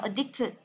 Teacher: cái trọng âm của nó sẽ âm thứ hai